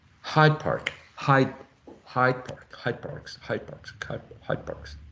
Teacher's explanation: this uh final D here before a p sounds more like a b